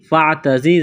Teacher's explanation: زا میں سیٹی کی آواز پیدا کریں گے